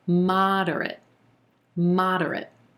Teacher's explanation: that second and third syllable are going to be a lot quicker